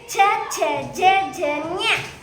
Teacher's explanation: ಚ ವರ್ಗದ ಅಕ್ಷರಗಳು ತಾಲುವಿನ ದವಡೆಯ ಸಹಾಯದಿಂದ ಹುಟ್ಟುವುದರಿಂದ ಅವು ತಾಲವ್ಯದ ಅಕ್ಷರಗಳು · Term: ತಾಲವ್ಯ ಚ ವರ್ಗ